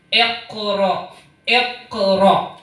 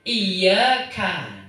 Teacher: Tapi kalau sudah terbiasa ini sangat ringan. Karena qaf itu makhrajnya hurufnya huruf tinggi, sedangkan kaf huruf rendah